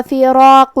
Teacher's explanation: کلمت فراقو میں حرف را کو موٹی آواز میں پڑھیں گے